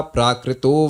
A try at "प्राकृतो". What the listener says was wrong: प्रकृतो नहीं है, प्रा प्रा। देखिए इंग्लिश में भी आप पढ़ रहे हैं तो उसमें एक के ऊपर ऐसे एक हेलीकॉप्टर से बना होगा, प्रा है वो।